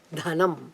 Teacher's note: Dha is always the aspirated Dha. It's what we call the Mahaprana Dha, Dhanam.